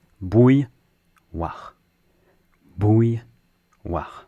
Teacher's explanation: So you start by saying bou, and then you add a y.